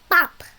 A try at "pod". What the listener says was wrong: Okay, that's a D, so that's really a pod rather than pop.